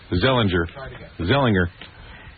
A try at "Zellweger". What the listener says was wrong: There's a W. Clearly a W.